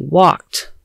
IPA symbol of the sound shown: t